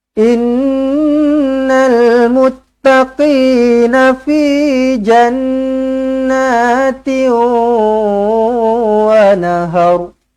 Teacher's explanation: Innal nun sabdu wajibul gunnah, dengungkan dua harakat.